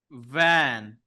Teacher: F has a friend, and the friend is V because it's said the same way, but we're adding our voice.